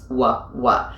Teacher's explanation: if you use your lips at all to make the R sound, you're always going to get the W because you're rounding your lips